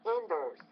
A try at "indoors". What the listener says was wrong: Yeah, indoors, indoors, indoors. Stress on the second syllable, I think, not the first.